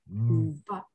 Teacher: 我发音之前，我生理性的会让我的声带先震动一下，作为一个发音的前哨